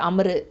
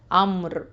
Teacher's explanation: ரா வந்து சுக்கூன் மாதிரி நிப்பாட்டிடணும். இந்த ரூ சவுண்ட்லாம் கொடுக்கக்கூடாது. அம்ரு அப்படின்லாம் சொல்லக்கூடாது.